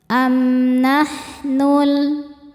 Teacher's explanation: Karena mim sukun menghadapi huruf nun tidak menghadapi mim atau ba. Maka mim sukun dibaca dengan jelas. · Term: izhar syafawi